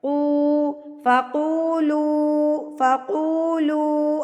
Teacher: قو کو ہم ایک حرکت کے برابر کھینچ کے پڑھ دیں گے، یہ واو مدہ کہلائے گا، اور ان کو مد اصلی بھی کہا جاتا ہے۔